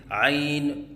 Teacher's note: آخر میں نون کے اوپر قلقلہ کرنا، جیسے عین، یہ غلط ہے